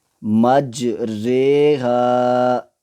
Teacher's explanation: امالہ کی راہ کو اردو کے لفظ قطرے کی راہ کی طرح پڑھیں، یعنی ری نہیں بلکہ رے پڑھیں۔